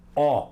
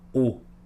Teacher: Dó a gente fala forte. E o som é aberto, alegre, ó. Do a gente fala fechado, o.